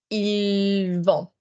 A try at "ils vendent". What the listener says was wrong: Hard. Sorry, such nice vowels. Soften the consonants. Such good vowels. Don't give me as much consonant. Just slightly soften the consonants. Less mouth.